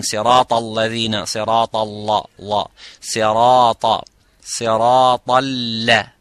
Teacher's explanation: Ta is full mouth, la is empty mouth.